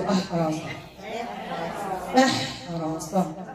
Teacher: الهمزة مرققة، الحاء مرققة، الراء مفخمة، والصاد مستعلية مطبقة